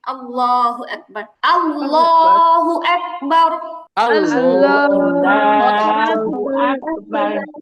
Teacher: আল্লাহ শব্দের লামের ডানে জবর বা পেশ থাকলে আল্লাহ শব্দের লামকে মোটা করে পড়তে হয়।